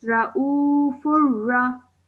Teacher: رأوفر Well done. But make sure you elongate the oo sound for 2 seconds